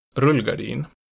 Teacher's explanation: type zero keeps a steady falling pitch